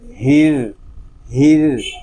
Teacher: را مشدد ہے، اس میں تھوڑا سا تکرار کریں گے ایک حرکت تک